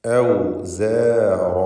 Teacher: റാഇനും അതിൻ്റെ അലിഫിനും തഫ്ഖീം കൊടുക്കണം.